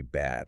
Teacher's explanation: My tongue completely flattened out, and pushed all the way against my bottom front teeth.